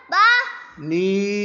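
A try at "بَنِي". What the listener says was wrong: با. با کو کیوں لمبا کر دیا؟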